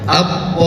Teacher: Hukum asalnya adalah mad tabi'i. Tetapi karena dia bertemu dengan mim yang bertasydid, maka hukumnya menjadi mad lazim mutsaqal kilmi. Dan di dalam Al-Quran untuk memudahkan diberikan tanda seperti bendera. Panjangnya 6 harkat